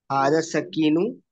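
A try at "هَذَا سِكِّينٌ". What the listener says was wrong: हाजा सकीन, सकीन नहीं है वो। अ, जो तस्दीद है ना, तस्दीद सीन के ऊपर, तस्दीद नजर आ रही है ना। सीन, सीन वाली।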